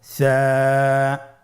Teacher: সা হরফটির মাখরাজ হলো উচ্চারণ স্থান জিহ্বার আগা সামনের উপরের দুই দাঁতের আগার সঙ্গে লাগিয়ে উচ্চারিত হয়।